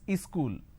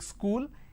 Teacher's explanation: in places like up bihar jharkhand they add another syllable they pronounce this as ischool wherever there is a word that